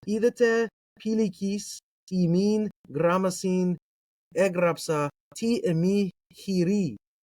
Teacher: Omicron iota vowel pair is pronounced as iota. Upsilon is pronounced as iota. Everything is like iticized or ioticized. So in Koine or in Kune, it sounds something like idete pelicius umin grammasin egrapsate eme chiri.